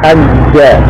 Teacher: Jadi asalnya adalah hajaja, ain kalimah huruf jim, lam kalimah juga huruf jim. Kemudian kedua huruf yang sama idgham, diidghamkan, dimasukkan, dijadikan satu menjadi hajja